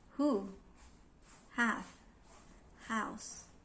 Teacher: The glottal sounds are represented by the symbol H and produced without active use of any parts of the mouth